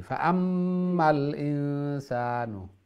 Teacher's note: নুনো আর মিমো যদি তসদিদ হয় তাহলে ওয়াজিব গুন্না, গুন্নাটা একটু স্ট্রং করিয়া